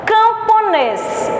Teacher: O nês da palavra camponês é a sílaba tônica. Então, se a última sílaba é tônica, a palavra é oxítona.